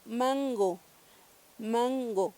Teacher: vamos a ver que la lengua va a hacer una curvatura y va a pegar en el velo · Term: nasal velar